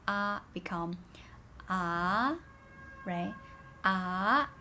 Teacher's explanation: the second tone which is a rising tone the tone mark is also going up